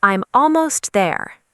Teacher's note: Notice how native English speakers often connect I'm and almost very smoothly. Don't stop between the words.